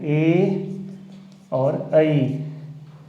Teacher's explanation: कंठ और तालु दोनों से जिसका उच्चारण स्थान हो उसे कंठ तालव्य कहते हैं। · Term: कंठ तालव्य स्वर